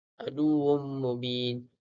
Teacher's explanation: tanwin bertemu dengan mim merupakan idgham al-hunnah, perlulah dengung 2 harakat. Mubin ma'arif sukun, perlu dibaca 2, 4 atau 6 harakat.